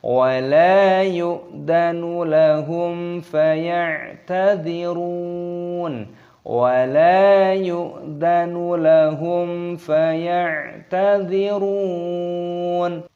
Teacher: mimnya ini bertemu dengan huruf fa, ini hukumnya dibaca idhar syafawi, dibaca jelas, jadi jangan dibaca samar